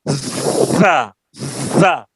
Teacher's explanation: زا میں اگر سیٹی پیدا نہیں ہوگی تو زا زال سے بدل جائے گی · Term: صفت صفیر